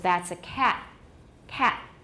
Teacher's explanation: many people will have a glottal stop at the end of a cat in phrases such as that's a cat